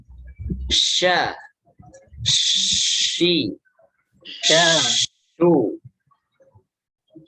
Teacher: Ya, huruf sya, sya, huruf sya atau shin ya. Di sini dia sama dengan huruf jim dari lidah tengah juga, hanya saja dia tidak sampai menempel ke langit-langit, hanya mengarah saja.